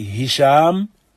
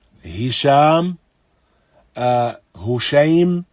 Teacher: So these two letters originate in the throat. Ha and hamza. That is the deepest part of the throat.